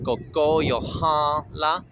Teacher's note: the first word, Kokóyahaŋla, is a nasal N. Just force air through your nose.